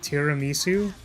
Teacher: I'm saying it as one word but the emphasis on the second syllable